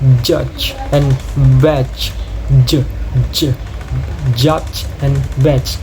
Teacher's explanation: It begins with a complete blocking of airflow at the alveolar ridge, followed by a release through narrow constructions, but with vocal cord vibration. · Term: voiced alveolar affricate